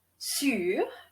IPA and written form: syʁ (sur)